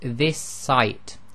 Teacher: And you'll notice that when you say it, you hold the S slightly longer and you've effectively made it one S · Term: gemination